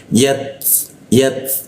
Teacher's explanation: Ta itu menggunakan ujung lidah ditempelkan ke gigi. Ee ketika ta mati itu ada bocor halusnya terdengar ya